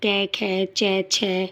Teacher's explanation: पहला और दूसरा वर्ण हमारा अघोष में आता है